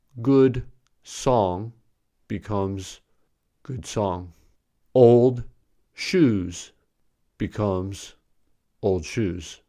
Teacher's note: When a plosive and a fricative are together, the plosive becomes a fricative. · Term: assimilation